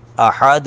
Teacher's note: اب ذرا غور کریں کہ احد، احدن ہے، لیکن آیت کی وجہ سے، وقف کی وجہ سے ساکن ہوا تو دال ساکن پر قلقلہ کریے، احد، یہ د کی آواز آتی ہے۔